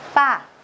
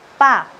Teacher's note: Đọc rất là căng, không bật hơi.